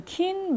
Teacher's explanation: it's fronted because of front vowel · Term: fronted velar